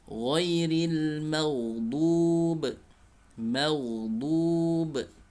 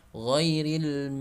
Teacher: mengalir suara ghain, tidak boleh tertahan suaranya sehingga menjadi mantul ketika sukun. Ya, jadi bunyinya ghairil seringkali banyak yang memantulkan suara ghain ketika sukun.